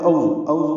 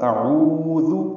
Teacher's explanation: حمزہ اقصی حلق سے، عین وسطی حلق سے